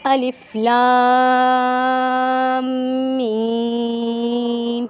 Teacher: لام کو ہم 5 الف کی مقدار کھینچ کر پڑھیں گے، اور میم پہ ہم غنہ کریں گے، اور میم کو بھی ہم 5 الف کی مقدار کھینچ کر پڑھیں گے، ٹھیک ہے۔